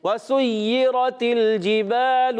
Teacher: واو کے ادائیگی ہونٹوں کی گولائی سے